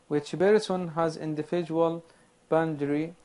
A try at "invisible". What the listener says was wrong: This is invisible, not individual.